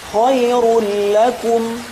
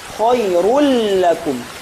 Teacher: Ketika kita membaca ro langsung dia masuk ke suara huruf lam. Tidak ada sedikit pun suara tanwin atau nun. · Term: idgham kamil